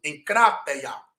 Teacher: O primeiro gama, som de N. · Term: gama nasal